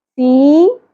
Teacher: یا ساکن حرف مدہ ہے، ایک الف کے برابر کھینچیں گے